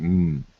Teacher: an M sound is a nasal because to say M, you have to kind of breathe out of your nose or breathe into into your nose.